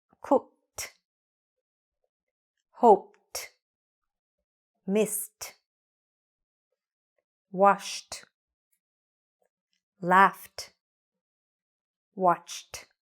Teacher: these are unvoiced there's very little vibration